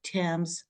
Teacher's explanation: Like Thames, we have TH, but it's T